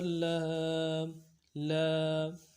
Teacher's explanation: کھڑا زبر کو ایک الف مقدار میں کھینچنا ہے